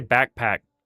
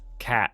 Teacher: I don't really say the ck in either of the C's or K's in backpack. I just stop talking when I reach the end of each syllable. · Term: California accent